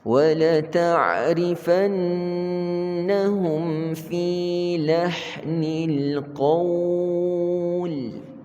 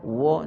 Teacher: Wa nipis, Allah yang tebal.